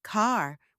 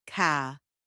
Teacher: Another key thing is the missing R sound. Americans say car with a clear R, but Brits we say ca. · Americans say car with a clear R, but Brits we say ca. Yes, in Britain it's all about dropping the R.